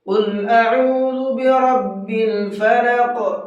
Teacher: قل بڑے قاف کے ساتھ میں ہے، منہ بھر کے پڑھیں گے اس کو، قاف کو